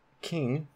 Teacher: aspiration occurs in the onset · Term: aspirated K